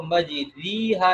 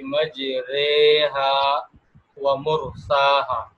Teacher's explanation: را کے نیچے جو کھڑی زیر ہے اس را پر امالہ کیا جائے گا، یعنی اس کو تھوڑا سا یوں سمجھ لیں کہ مجہول کر کے پڑھا جائے گا.